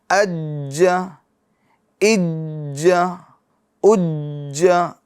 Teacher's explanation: اسی طریقے سے جیم کو دیکھ لیں، جیم بھی حروف قلقلہ میں سے، اج، اج، ایسا نہیں اج، اج، جلدی نہیں، تھوڑا دیر آواز مخرج میں رکے گی، اور اسی کو کہتے ہیں جماؤ، ٹھیک ہے، اج، اج، اج۔